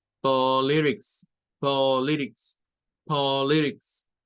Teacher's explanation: la última sílaba para esa es tix, con el sonido corto para la I. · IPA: /ə/